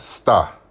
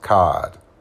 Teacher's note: one of the most noticeable characteristics of the accent is the r sound isn't pronounced the word star for instance is pronounced star s t ah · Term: received pronunciation